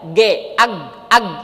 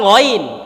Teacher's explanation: gain Arab itu bukan G dalam bahasa Indonesia secara makhraj itu sudah bergeser